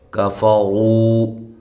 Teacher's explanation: کاف کو باریک اور را کو موٹا